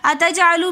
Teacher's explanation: اتجعلو میں جیم حرف قلقلہ میں سے آ رہا ہے، تو اس لیے ہم جیم کے اوپر قلقلہ کر کے پڑھیں گے